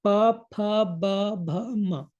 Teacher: the tongue is resting and both your lips they're coming together and uh they are going away from each other so they are touching each other P this we can visually